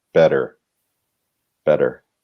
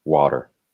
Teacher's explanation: what we do in American English is it's still written the same, but we almost pronounce D's in the middle if you listen for it